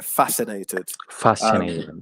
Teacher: So the stress is on the first syllable there, fascinated.